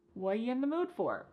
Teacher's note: What are you in the mood for? The word are is gone. And the word you has been reduced to y. So when we link together what and you, it's super fast. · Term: extremely reduced